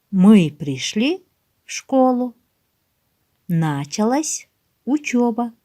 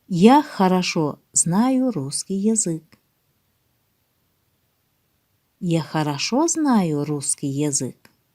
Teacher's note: голос вначале повышается, затем делается небольшая пауза, а в конце повествовательного предложения голос понижается